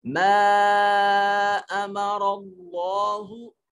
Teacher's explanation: اللہ کی لام کو موٹا کر کے پڑھیں گے